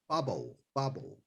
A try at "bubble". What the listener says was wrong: Yeah, you said it perfectly.